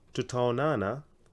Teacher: anytime in kiswahili you have double vowels like these two A's you prolong them